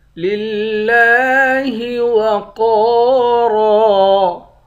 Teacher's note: لام کو لفظ اللہ کے لام کے ساتھ ملا کر لفظ اللہ کے لام کو باریک پڑھیں گے